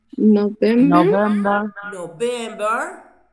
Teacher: the 5 months which are stressed on the second syllable are July, September, October, November, and December